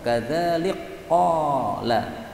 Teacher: kaf diidghamkan pada qaf